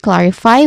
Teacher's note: clarify, which has 3 syllables, but the stress syllable is on the first, which is clar. Now, clar, the first syllable, it starts with a consonant cluster of the consonant sounds that K and L makes, and then followed by a short A vowel sound and ends with a letter R sound.